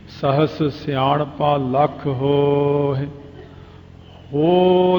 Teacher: ਹੇ ਛੇਤੀ ਹੀ ਬੋਲਿਆ ਜਾਂਦਾ। ਲੰਮਾ ਕਰ ਦਿਓ ਵਾਵੇ ਦੇ ਕੰਨੇ ਨੂੰ। ਜਿੰਨਾ ਦੀਰਘ ਅੱਖਰ ਨੂੰ ਜਿੰਨਾ ਲੰਮਾ ਕਰਾਂਗੇ, ਉਹ ਦੂਜੀ ਸਿਹਾਰੀ ਆਪਣੇ ਆਪ ਹੀ ਬੋਲੀ ਜਾਣੀ ਹੈ। · ਹੋ ਲੰਮਾ ਕਰ ਲਓ, ਹਾਹੇ ਦੀ ਸਿਹਾਰੀ ਆਪਣੇ ਆਪ ਹੀ ਬੋਲ ਜਾਂਦੀ ਹੈ, ਉਹਨੂੰ ਕਹਿਣ ਦੀ ਲੋੜ ਨਹੀਂ ਪੈਂਦੀ।